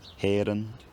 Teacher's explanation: the vowel in the last syllable becomes Central